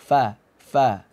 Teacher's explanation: Nah, bagian bibir yang basah itu disebut dengan perut bibir. Jadi, gigi seri itu kita tabrakkan ke bagian perut bibir bawah yang basah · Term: huruf fa